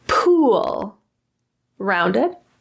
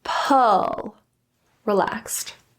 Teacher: So ooh has a much more rounded lip position. Our tongue is very tight against the roof. Ooh, ooh. And our jaw is closed.